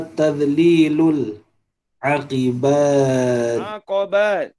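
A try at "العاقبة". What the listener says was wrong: Masih akibat. Itu Melayu. Aqobati.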